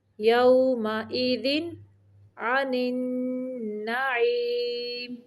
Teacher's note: یہاں پہ تنوین کو صرف ظاہر کرنا ہے، لمبا نہیں کرنا